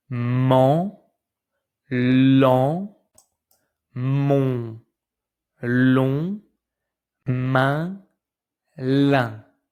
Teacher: when you pronounce these vowels, the sound comes at the same time from your mouth and from your nose. Actually, the air comes at the same time from the mouth and the nose. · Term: nose vowels